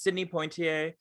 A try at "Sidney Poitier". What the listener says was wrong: Poitier. Like, just, there's no N. Sidney Poitier. Yeah, Poit. There's no N.